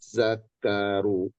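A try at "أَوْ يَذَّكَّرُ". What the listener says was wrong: Au yadza tipis. Za-nya za tipis. Sama za yang kedua juga tipis.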